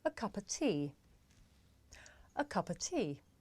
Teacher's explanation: The words a and of become schwa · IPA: ə